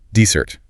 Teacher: Stress on the second syllable. Dessert. Like stress because you want it so badly.